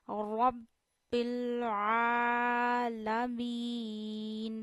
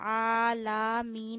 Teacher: लाम पे जबर वाज होनी चाहिए खींचनी नहीं है